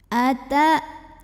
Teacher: hamzah tu syiddah, kuat bunyinya ya, pas kita tekan ini kayak tertahan bunyinya.